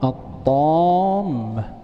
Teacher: فأدغمت اللام في الطاء